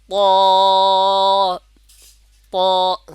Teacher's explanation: জিহ্বার আগা উপরে যে দুই দাঁত আছে দুই দাঁতের গোড়ার সঙ্গে লাগবে